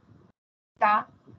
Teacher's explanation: la lengua y cuando decimos por ejemplo Ta no es la la punta de la lengua la que toca los dientes